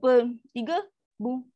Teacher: Ar-raum maksudnya baris masih kekal ada, cuma dia pendek aja. Bunyi dia lemah. Kita tak matikan.